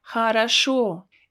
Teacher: Notice that I don't pronounce two first O as O, but I pronounce them as A because they are not stressed.